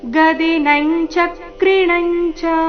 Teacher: ಮುಂದಿನ ಎರಡು ಅನುಸ್ವಾರದ ಉಚ್ಚಾರಣೆ ಚ ವರ್ಗದ ಅನುನಾಸಿಕದ ರೀತಿ